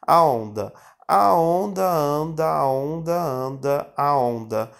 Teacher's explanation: o N, né, em final de sílaba, depois de uma vogal, ela nasaliza essa vogal, traz o som para o nariz, dando aquele sinal de nasalização.